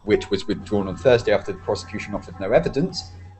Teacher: as a sentence it sounds okay but this subordinate clause which is separated by two commas is additional information and with additional information with the intonation you go down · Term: go down a bit